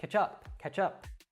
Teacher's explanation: that CH at the end again will connect to the particle up so it becomes catchup catch up now this price seems kind